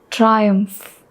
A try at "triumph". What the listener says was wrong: Umph. Triumph. I'm not hearing the umph. Triumph. Umph. Triumph.